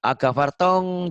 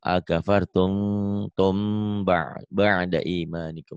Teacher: Ini ikhfa syafawi. Akafartum bunyi M tapi bindeng. Jangan ikhfa tapi ya, jangan ikhfa akafartong, jangan tong.